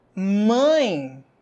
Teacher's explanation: nariz mãe perceba que no seu nariz vai bater alguma coisa O que que tá batendo aí no seu nariz é o ar isso quer dizer que o som também sai pelo nariz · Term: ditongo nasal